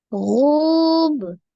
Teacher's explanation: Gu-nya ma tabi'i waw. Baca 2 harakat ya. Waw sukun sebelumnya dhammah.